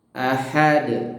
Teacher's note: a-nya hamzah, kemudian ha-nya tipis ya.